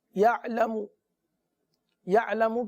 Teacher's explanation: یعلم، یعلم کی میم کو کھینچیں گے نہیں. صحیح نا، میم پر پیش ہے، بغیر کھینچے پڑھیں گے